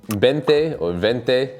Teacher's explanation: You have a b and the v sound, which pretty much sound the same.